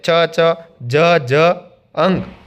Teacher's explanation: તાળવાના પાછળના ભાગમાંથી બોલાતા શબ્દોને તાલવ્ય વર્ણો કહેવામાં આવે છે.